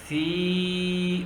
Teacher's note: ادھر دیکھو ساکن کی زیر ہے، واو کے اوپر ساکن ہے. سا زیر یا سی، باریک آواز ہوگی